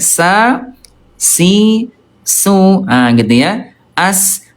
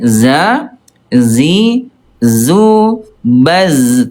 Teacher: Huruf sin ayah bunda, dari segi udara dia alhams keluar udara ya